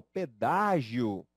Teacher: há três sílabas a três vogais só que no finalzinho aqui nós conseguimos perceber a existência de uma vogal e de uma semivogal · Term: vogal e semivogal